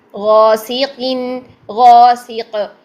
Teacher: قاف کسرہ کے ساتھ جب ہوتا ہے اس کی بھی تفخیم کم ہو جاتی ہے · تو غین کو خوب موٹا رکھیں، اس کے ساتھ غین کا الف بھی، غین کے ساتھ الف بھی موٹا ہوگا کیونکہ الف اپنے ماقبل کے تابع ہوتا ہے